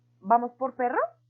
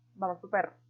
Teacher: Y ellos responden, vamos por perro. La persona se lo hizo a nivel de pregunta y el niño lo imitó a nivel de afirmación.